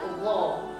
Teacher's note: Kalau hanya dimonyongkan dia hanya berbunyi o aja tapi tidak tebal bunyinya. Padahal yang diinginkan itu huruf-huruf tebal itu di setiap la itu yang bunyi tafkhimnya padat gitu bunyinya.